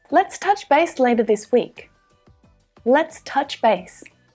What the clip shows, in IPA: tʌtʃ